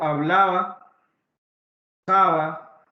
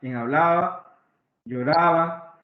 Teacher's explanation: cuando está entre vocales y no al inicio de palabra, suena un poco más relajado. Suena como si más bien fuera como una continuación de la A.